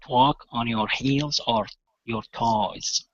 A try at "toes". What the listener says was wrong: Okay, almost. So instead of toes, toes. So go to an oo sound before the S, okay? Instead of an eh.